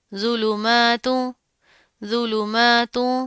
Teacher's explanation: میم کے اوپر کھڑا زبر آ رہا ہے، ایک الف کے برابر پڑھیں گے